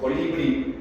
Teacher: En una palabra como colibrí, la sílaba tónica es bri. Las sílabas tónicas son las que suenan más, las que tienen la mayor fuerza.